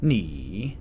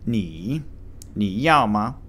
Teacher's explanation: the third tone, ni. It descends and reascends upward